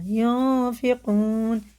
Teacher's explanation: ناک میں چھپا کے ایک الف کے برابر اس نون کو پڑھنا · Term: اخفا